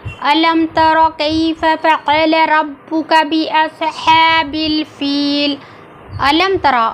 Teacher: تا زبان کی نوک سامنے کے دو دانتوں کی جڑوں سے لگا کر ادا کیا گیا ہے۔